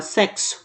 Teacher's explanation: x da palavra sexo representar uma sequência de dois fonemas que seria o KS · quando você fala sexo, você percebe que parece que tem um K e um S